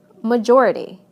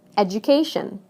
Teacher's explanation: the stress moves right to the syllable immediately before the suffix